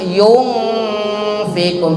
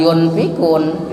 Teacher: Ikhfa, nun mati menghadapi fa, dibacanya harus didengungkan. yung fikun, bukan yun fikun, tapi yung fikun.